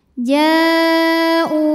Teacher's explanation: karena ada hamzah baris dhammah bertemu waw sukun, bunyinya dipanjangkan 2 harokat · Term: mad badal